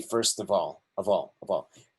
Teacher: Let's remember that that F doesn't sound like a V, sounds like a V. I mean, so doesn't sound like an F, sounds like a V, as in Victor